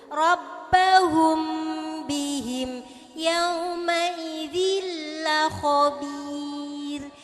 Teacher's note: Jadi bacaan la khabir itu adalah bacaan tarqiq. Ro tarqiq, bacaan tipis.